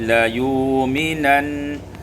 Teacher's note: ditukar hamzah waw menjadi la yu'minan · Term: ibdalul hamzati waw